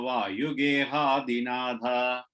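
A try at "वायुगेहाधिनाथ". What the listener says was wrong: Yeah, the last line, na, tha, just make sure it's not a da sound is not coming, tha sound is coming. And the last letter. Natha.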